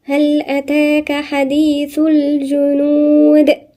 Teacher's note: هل أتاك في ألف صغيرة هنا، دي بمقدار حركتين، مد طبيعي مقدار حركتين.